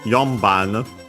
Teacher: The N becomes technically then M because of the following B, so yeah, bilabial stop, the B, and so also the bilabial nasal M.